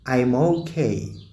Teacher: Kumbuka nimefanya liaison hapo. I'm nimeishia na consonant m. Alafu okay imeanza na irabu o. Kwa hiyo hapo nitalink hizo kwa kutumia liaison. Nitasema I'm okay.